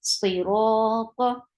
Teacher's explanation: Ta is heavy, but the sound is short.